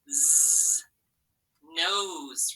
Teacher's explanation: that s between those two vowels sometimes sounds like z like a z sound